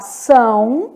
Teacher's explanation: Então, são, muito, pronunciados aí pelo nariz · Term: ditongo